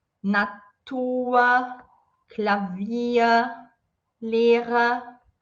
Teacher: quando o R está no final de uma palavra, ou depois de uma vogal, ele vai ter esse som como se fosse de um A.